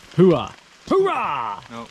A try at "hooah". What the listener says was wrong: No hoorah, that's the Marines. H-O-O-R-A-H is Marines. H-O-O-A-H is Army. Hooah.